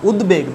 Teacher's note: দ এর সঙ্গে বফলা যোগ আছে, পরিষ্কারভাবে ব উচ্চারণ হচ্ছে